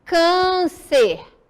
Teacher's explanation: O som é fechado, ok? Não é aberto como o agudo. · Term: som mais fechado